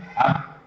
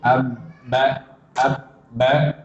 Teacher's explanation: Ketika sukun, ab, atau ketika tasdid, ab, ba, suaranya harus tertahan. Jangan dialirkan. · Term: syiddah